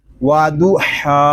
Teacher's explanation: ہا کو ہم ایک الف تک کھینچ کر پڑھیں گے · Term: کھڑا زبر